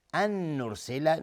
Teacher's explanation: نون ساکن بعدش نون ادغام با غنه